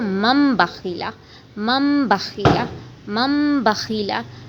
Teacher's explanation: یہاں پہ نون ساکن کے اوپر میم ہے تو اس کو میم پڑھا جائے گا، نون نہیں پڑھا جائے گا